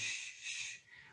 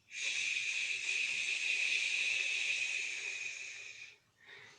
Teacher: you're chanting with strong whispering sound, like we say shh, shh, but no vocal sound. You say the same shape, shh.